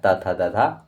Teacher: दंत से हो जाएगा त थ द ध